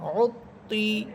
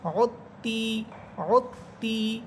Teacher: ত হরফটা মোটা হবে, অতি, মুখ ভরে করবেন, মুখ ভরে উচ্চারণ করবেন। অতি, আর তা একদম চিকুনভাবে, মুখ ভরবে না।